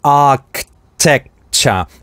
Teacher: tec это у нас краткий гласный /ɛ/, за ним идет стоп /k/, поэтому этот слог произносится с усиливающей гортанной смычкой